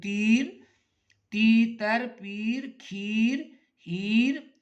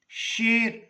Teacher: چھوٹی یہ جو ہے یہ یا معروف کہلاتی ہے، تیر کھینچ کے پڑھ رہے ہیں